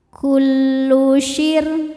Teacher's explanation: Ra sukun dibaca secara tarqiq karena sebelumnya kasrah, maka ra-nya dibaca tipis.